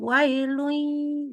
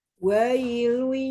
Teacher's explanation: cuman tanwin ketemu ya-nya belum masuk hidung nih dengungnya. Masukin hidung.